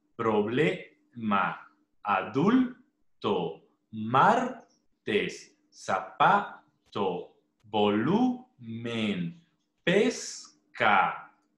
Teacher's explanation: O sea, quiere decir que estas palabras van a terminar en N, S o vocal. Pero su mayor elevación de voz siempre va a estar en la penúltima sílaba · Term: palabras graves